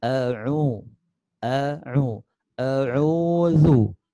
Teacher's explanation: Rasakan perpindahan dari tenggorokan bawah a ke tenggorokan tengah a.